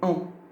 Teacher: C'est une voyelle nasale non arrondie.